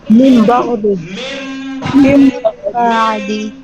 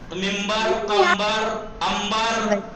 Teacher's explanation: इक़लाब यानी नून को मीम से बदल देते हैं